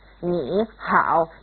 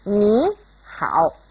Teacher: when two third tones are side by side, the first one becomes a second tone